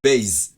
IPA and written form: beɪz (base)